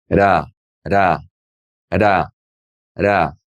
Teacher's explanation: It's just a little tap of your tongue behind your top front teeth. Ra. If you notice, my lips are not moving. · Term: soft R